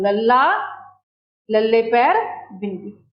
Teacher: number 8, पासेदार व्यंजन, जां पार्श्विक व्यंजन, जिन्हां दे उचारण समय साडे साह दी हवा जीभ दे पासियां तो निकल जाती है